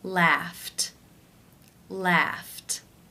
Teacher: the final sound of the infinitive is the unvoiced f sound since it's unvoiced it is case one where the e d is pronounced as the t t sound